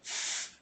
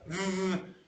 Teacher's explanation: We're both doing it through the teeth and the lower lip, okay? And that's a distinction where we voice or not voice. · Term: fricatives